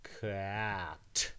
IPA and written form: c æ t (cat)